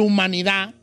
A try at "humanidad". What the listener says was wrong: No. Humanidad, con D al final.